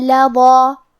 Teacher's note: ضا کی ادائیگی زبان کے سر اور اوپر والے دانتوں کے اندرونی کناروں سے ہے